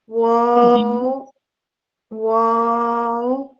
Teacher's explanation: واو شفتان کا حرف ہے یہ، اور ہونٹوں کی گولائی سے ادا ہوتا ہے، لپس کو پورا مکمل گول کرنے سے پھر ادا ہوتا ہے واو